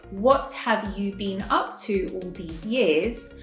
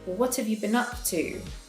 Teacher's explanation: so what have becomes what've and you is just ya and been is bin. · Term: reduce a lot of these words